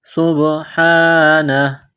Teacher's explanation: وَلَدًا سُبْحَانَهُ، سُبْحَانَهُ، سین میں سیٹی کی آواز پیدا کرنی ہے، سین کو با کے ساتھ ملانا ہے، با پر قلقلہ کریں گے